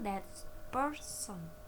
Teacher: when t is followed by p change into a p sound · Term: assimilation of place